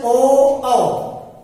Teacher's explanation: ओ, कंठ के साथ साथ हमारा ओठ चलता है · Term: कंठोष्ठ